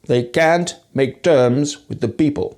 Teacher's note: What strikes me most about his speech is the lack of aspiration. After P, T, and K sounds in most accents of English, there's a strong puff of air after these consonants.